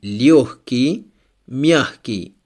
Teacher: In these two words we have letter G, but it's pronounced like H.